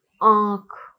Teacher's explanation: हवा नाक और मुख दोनों से ही निकलती है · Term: अनुनासिक